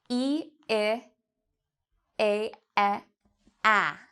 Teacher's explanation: So notice your mouth for each of these front vowel sounds, the main difference is actually your mouth is starting out small, and then it opens up, up, up, until you get to this sound, which is quite a big, your mouth is quite big in this.